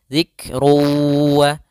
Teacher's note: ketika huruf kaf sukun ada sifat hamasnya dialirkan sedikit, zikru.